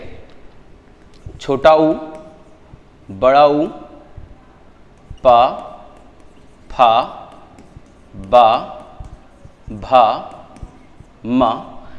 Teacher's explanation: तो ओष्ठ से आपके आ जाएंगे छोटा उ बड़ा ऊ प फ ब भ म ये इतने ओष्ठ से बोले जाने वाले वर्ण हैं